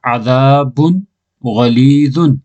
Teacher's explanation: عذاب غلیظ عذاب باقی کو دو پیش تنوین تو بعد حروف ہلکی بھی جو غین آ رہی ہے اس واسطے دو پیش تنوین میں جو نون کی آواز ہے اس کو ظاہر کر کے پڑھیں گا